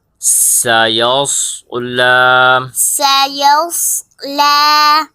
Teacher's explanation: لام کے اوپر کھڑا زبر ہے، اسے ایک الف کی مقدار کھینچ کے پڑھیں گے۔ لام کھڑا زبر لا، لام کھڑا زبر لا، سیس لا۔